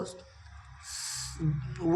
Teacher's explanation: दंतोष्ठ ध्वनि है। दांत और होठों के द्वारा निकलने वाली।